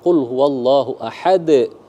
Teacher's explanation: Kubro itu seperti dalam Quran surah Al-Ikhlas, misal qul huwallahu ahad, di akhir pantulannya lebih besar, maka disebut dengan kubro ya, qalqalah besar